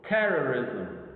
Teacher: the first syllable is prominent over the rest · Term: word stress